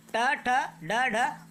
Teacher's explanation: इन व्यंजनों के उच्चारण में जीवा पहले ऊपर उठती है, मूर्धा को स्पर्श करेगी और फिर झटके से वापस आ जाती है, यानी जीभ उछलते हुए वापस आती है, इसलिए इसे उत्क्षिप्त व्यंजन कहते हैं।